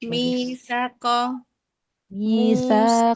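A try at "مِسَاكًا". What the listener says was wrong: Coba saknya dua harokat.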